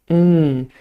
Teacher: there's always contact with the tip of the tongue behind your teeth air escapes through the nose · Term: nasal n